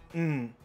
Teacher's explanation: 就是舌头放在牙龈上发出来的鼻音 。▁t▁的是用舌头跟牙龈来发出涩音。然后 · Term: 齿龈音